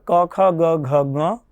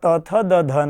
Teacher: કકારથી લઈ અને મકાર સુધીના જેટલા વર્ણો છે એ બધા વર્ણોને સ્પર્શ કહેવામાં આવે છે. એટલે કે એ વર્ણોની સ્પર્શ સંજ્ઞા કરવામાં આવે છે.